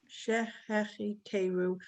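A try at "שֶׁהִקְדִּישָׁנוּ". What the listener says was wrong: No. You said cheche. It's shehik tiru. It's a kuf. And a kuf is a.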